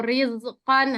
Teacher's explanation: ada ro berharokat kasro rizqan, nah dibaca tipis ya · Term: ro tipis